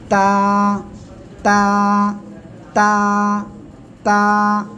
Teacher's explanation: জিহ্বার আগা সামনের উপরে দুই দাঁতের গোড়ার সঙ্গে লাগাবেন, লাগিয়ে এক আলিফ টেনে উচ্চারণ করবেন।